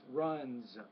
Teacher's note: with the S after the voice consonant runs it's more of a z not an S